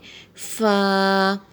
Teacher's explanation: فا کو جب ہم ادا کر رہے ہیں تو اوپر کے جو دانت ہیں وہ نیچے والے ہونٹ کے تری والے حصے میں لگ رہے ہیں